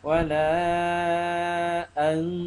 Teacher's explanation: Baca nun mati tak bunyi, bunyi dengung saja. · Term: ikhfa